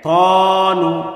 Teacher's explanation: ত এর উপরে খারা জবর আসার কারণে এক আলিফ টান হবে মাদ্দে তবাই। সেই ত এবং ত মোটা হবে।